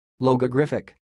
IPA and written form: ˌlɒɡəˈɡrɪfɪk (Logogriphic)